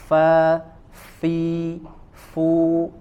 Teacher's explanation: ya huruf H ada angin keluar ketika kita menempelkan gigi eh ujung gigi seri bagian atas ke bibir bagian bawah mengeluarkan angin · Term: huruf Fa